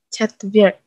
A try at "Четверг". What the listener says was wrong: R-nya kerasa. Четверг. Bukan Вьерг. Четверг. Четверг. Enggak pakai Y di situ. Chatverk. Chatverk.